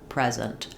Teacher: we need to stress the first syllable as a noun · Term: word stress